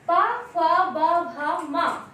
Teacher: पा वर्ग में जब हम ये 5 वर्ण का उच्चारण करते हैं पा फा बा भा मा। तो इनको बोलते समय हमारे ओष्ठ आपस में मिलते हैं